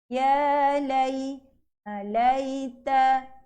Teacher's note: Huruf ya-nya ada tanda sukun, maka lai itu tidak boleh baca panjang 2 harakat. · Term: Bacaan lin